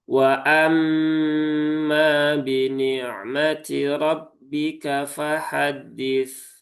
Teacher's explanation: ini huruf tipis ya, tipis semua dan pastikan hamzahnya jangan terayun